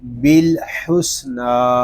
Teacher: نون کو ہم ایک الف تک کھینچ کر پڑھیں گے کیونکہ نون کے اوپر کھڑا زبر ہے